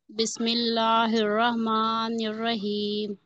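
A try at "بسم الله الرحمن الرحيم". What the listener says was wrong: रहमान और रहीम में थोड़ी सी हा की और आवाज आना चाहिए, थोड़ी सी, ठीक है। ठीक है, रहमा करके रुकेंगे हम, क्योंकि नून को हमें आगे रॉ से मिलाना है। निर रहीम, ठीक है।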